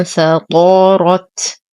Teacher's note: لدينا نون ساكنة وبعدها حرف الفاء، فالحكم إخفاء حقيقي مع غنة كاملة. انفطرت، نفخم الطاء والراء، نقف على التاء بهمس